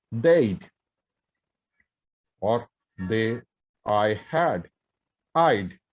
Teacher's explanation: So example, they had, the pronunciation becomes they'd, or I had, I'd. So we do not have a schwa sound. Simply, if this had or would are followed by a vowel sound, we just have to pronounce them with a d.